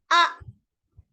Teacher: kalau kita sebut Hamzah dia akan mengetat ketat tu sebab apa peti suara tertutup